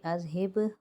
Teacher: با ساکن آ رہا ہے، حروف قلقلہ میں سے ہے تو یہاں پر قلقلہ کریں گے۔